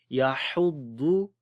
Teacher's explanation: ہا کو گلے کے درمیان والے حصے سے پڑھیں گے